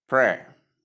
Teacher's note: The P sound, R sound, and short S sound. Usually Americans like adding R at the ending of their pronunciation. So that is why you see another R sound at the end of the American pronunciation.